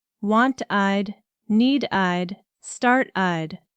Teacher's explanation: And a small group get that extra i d sound, but only when the verb already ends in a t or d.